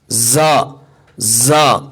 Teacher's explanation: زا کی آواز اس میں دیکھیے دو چیزیں ہیں، باریک اور دوسری چیز ہے سیٹی کی آواز. اس میں سیٹی کی آواز آئے گی زا زا.